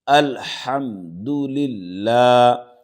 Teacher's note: لفظ اللہ سے پہلے زیر ہے تو لفظ اللہ کے لام کو باریک پڑھیں گے۔